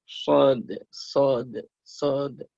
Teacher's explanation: Nah, dia tekanannya ke shin itu lebih tebal ya, lebih kuat. Kalau shod ya kita shod agak mencucu.